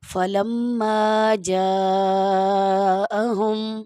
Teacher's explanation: بڑی مد ہے تو اس لیے آپ نے اس کو 5 الف کے برابر تقریباً کھینچنا ہے۔ 3 الف کے برابر بھی کھینچ سکتے ہیں، لیکن زیادہ سے زیادہ جو الف کی مقدار ہے وہ 5 الف کے برابر ہے، تو اس لیے آپ 5 الف کے برابر بھی کھینچ سکتے ہیں، ورنہ 3 الف کے برابر بھی جائز ہے، پڑھ سکتے ہیں۔